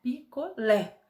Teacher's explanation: O Lé é mais forte então O Lé é a sílaba tônica